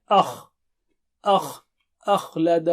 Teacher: خا موٹا اور اونچا ہے، آ باریک ہے